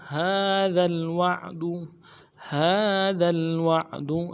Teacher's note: ہا کے اوپر کھڑا زبر ہے، ایک الف دال میں کھینچیں گے. ذال کو آگے لام کے ساتھ ملانا ہے، ذال کو باریک بھی ادا کریں گے.